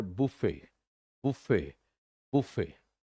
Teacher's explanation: ये बुफे है, यानी लैटर पार्ट पे जोर है